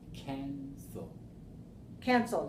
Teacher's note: If the word cancel, 2 syllables, right, is stressed on the first syllable, not the last one